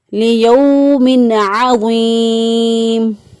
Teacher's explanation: پھر ہم اس کو پڑھیں گے الا یظن اولئک انہم مبعوثون لیوم عظیم، یا زبر واو یو، واولین، واو ساکن سے پہلے والے حرف پر زبر اس لیے واولین ہے، نرمی آسانی جلدی سے ادا کریں گے، لمبا نہیں کریں گے